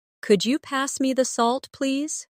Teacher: Listen to the way my voice rises on Could you? and falls gently at the end.